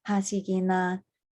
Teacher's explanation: It's all staying mid tone and below